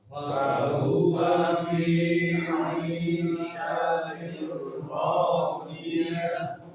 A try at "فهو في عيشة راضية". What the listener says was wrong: Ainnya betul-betul ain. Ain fi aisyati. Coba lagi.